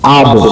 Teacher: বা উভয় ঠোঁটের ভেজা অংশ হতে উচ্চারিত হয়, আব। মিম উভয় ঠোঁটের শুকনো অংশ হতে উচ্চারিত হয়, আম।